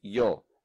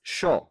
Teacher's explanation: But in Argentina, they don't say ya, they say sh.